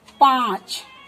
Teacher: मुख खुला और नाक द्वारा कोमलता से इसका उच्चारण हो रहा है। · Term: चंद्र बिंदु